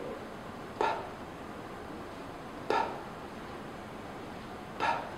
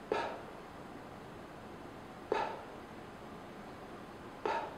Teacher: Feel that puff of air tapping at your palm. Because p is an unvoiced consonant, there's a strong puff of air tapping at your palm.